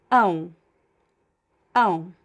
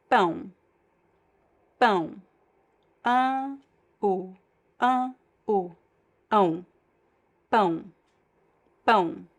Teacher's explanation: it's a diphthong, so one strong vowel and one weak vowel. It goes like down, the sound, ão, ão.